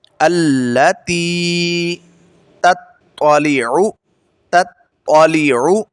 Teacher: عین کی آواز جو ہے وہ حلق کے درمیانے حصے سے ادا ہوتی ہے